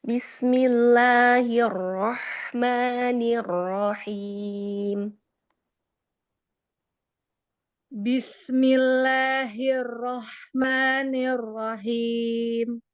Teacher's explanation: tafkhim pada huruf ro dia itu harus sedikit ya takrirnya itu supaya tidak r banget ya. Jadi agak pudarkan sedikit ya setengah-setengah.